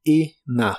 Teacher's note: La E de la palabra enough se pronuncia como una I corta, y la combinación de letras O, U, G, H normalmente se pronuncian como si fuera una A y una F en inglés, así que es enough.